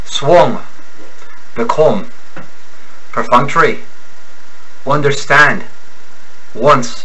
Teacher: There is a slight nasality to the Irish brogue.